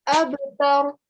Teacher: give a jerking sound on the ba, okay, because ba is your kalkala letter, but do not give a jerking sound on the ra